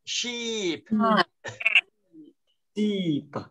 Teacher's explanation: Kéo dài, âm y kéo dài ra tí nữa nào